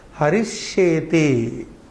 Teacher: There is a double sha coming there. Sa has merged into shakara. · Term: regressive assimilation